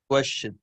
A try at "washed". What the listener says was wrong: The E, the E doesn't sound. Wash. Wash. Washed.